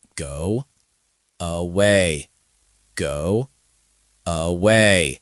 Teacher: your brain naturally inserts a W because go ends in a rounded shape. It becomes away. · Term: hidden W